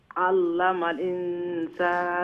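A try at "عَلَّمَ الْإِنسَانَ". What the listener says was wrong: আল্লামাল ইনসান, আল্লামাল কইয়া হামজারে আর একটু স্পষ্ট করিয়া নেনি, আর নাইলে হামজাটার উচ্চারণ বাদ পড়ি যার।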